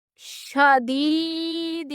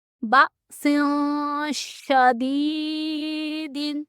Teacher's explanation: شین پڑھتے وقت ہماری آواز منہ میں پھیلتی ہے